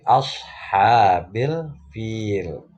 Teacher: alif lam qamariyah karena alnya jelas terdengar, alif lamnya jelas terdengar